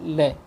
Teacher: जब हमारी जिह्वा जो है बिल्कुल गोलाकार हो जाती है तो उसके दोनों ओर से, पार्श्व से, बगल से जो है हवा निकल जाती है। तो ये ऐसा एक वर्ण है हमारा ल, इसको हम पार्श्विक वर्ण कहते हैं।